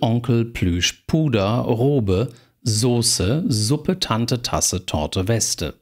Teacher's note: merken sie an der Art wie ich das vorgelesen habe alle zwei silbig und Trochäus oder einsilbig